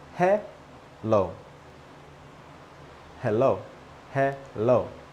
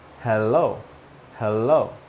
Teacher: one doesn't have an L in the first syllable and the other one does.